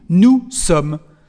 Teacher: as you can hear, we don't pronounce the letter S at the end of nous